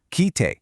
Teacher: hold that i sound for just a fraction of a second longer, kite, and suddenly it means listen. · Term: long vowel